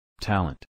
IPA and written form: ˈtæl.ənt (talent)